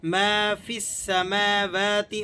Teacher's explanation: اگر آپ فا کو سین سے ملا کر پڑھیں گے تو پھر یہاں پر یہ الف اور لام دونوں سائلنٹ ہو جائیں گے. ما فی السماوات، اور فا کے بعد جو آپ نے کو یا دکھائی تھی میں نے، وہ یا بھی سائلنٹ ہو جائے گی.